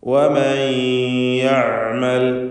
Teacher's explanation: തൊണ്ടയുടെ മധ്യമാണ് ഐനിൻ്റെ മഖ്റജ്. വസത്തുൽ ഹൽഖ്, ഈ ഐനിൻ്റെ ഉച്ചാരണത്തിൽ തവസ്സുത്ത് എന്ന സിഫത്തും അതിനുണ്ടായിരിക്കുന്നതാണ്.